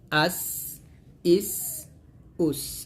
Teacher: সামনে নিচে দাঁতের আগা হতে শীর্ষ পাতলা ভাবে আদায় হবে অর্থাৎ জিহ্বার আগাটা সামনে নিচে দাঁতের সাথে লাগিয়ে সিনটা পাতলা করে উচ্চারণ করতে হবে